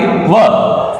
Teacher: तो वकारस्य में दंतोष्ठ्य होता है और एक ही वर्ण होता है इसके अंदर